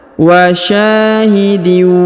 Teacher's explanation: bertasdid maka k kita hilangkan atau kita leburkan ke huruf ww kita dengungkan dan kita tahan dua harakat